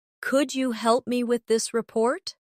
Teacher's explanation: Pay attention to the stress. The words help and report carry more weight in the sentence.